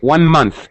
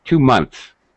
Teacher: 1 month. You strongly hear the TH. 2 months. You barely hear it.